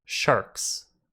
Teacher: The word shark ends with an unvoiced K.